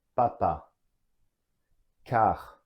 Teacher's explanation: you see the position of my mouth slightly open, A, and my tongue is at the bottom, touching the back of my teeth.